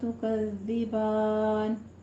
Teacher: تکذبان میں زال کے پر سیٹی کی آواز نہیں لانی ہے